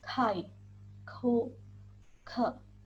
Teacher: Yang keenam yaitu huruf K, dibaca KH. Suara pangkal lidah atau velar aspirasi. Pangkal lidah menyentuh langit-langit mulut.